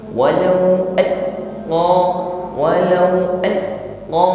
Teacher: huruf lam sukun adalah tawasut. Sebagian suara mengalir, jadi suara tersebut tidak boleh terputus atau ditahan. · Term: lam sukun tawassut